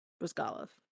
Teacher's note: emphasis on the second syllable